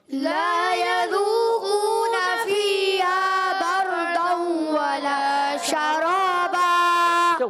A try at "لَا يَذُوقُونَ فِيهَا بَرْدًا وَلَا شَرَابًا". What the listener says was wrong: غنہ آپ چھوڑ دیتے ہیں. غنہ آپ اتنی سپیڈ دکھاتے ہیں غنہ رہ جاتا ہے. تھوڑا اور غنہ لمبا کریں. لا يذوقون فيها بردا ولا شرابا.